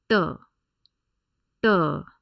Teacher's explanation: all these consonants that you see in the third row are retroflex consonants which means to pronounce these the tip of the tongue is curled Inward and placed back against the pallet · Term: retroflex t sound